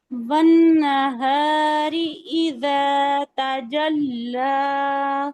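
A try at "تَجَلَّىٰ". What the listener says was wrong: اچھا اب کس بات کا خیال رکھنا ہے کہ تا جلا نہیں ہے، تجلا، ایک حرکت، ٹھیک ہے، تجلا، لمبا نہیں کرنا، لمبا کہاں بھی کرنا ہے جہاں پہ کوئی مد، یہاں پہ کوئی مد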